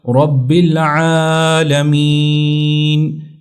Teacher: را کے اوپر جب زبر یا پیش ہوتی ہے تو اس کو موٹا پڑھا جاتا ہے ، تو یہ ہوگا رب العالمین۔ یہاں پر عالمین اس کو